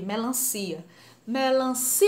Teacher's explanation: A sílaba mais forte, o si, e é sem acento.